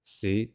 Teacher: the low Rising tone Rising like the shape of the Z